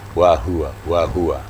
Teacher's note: Huruf H ini makhrajnya adalah aqsal halqi, di pangkal atau mendekati dada.